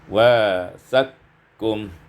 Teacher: diidghamkan qaf pada qaf maka menjadi wasaqkum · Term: idghamul qaf fil kaf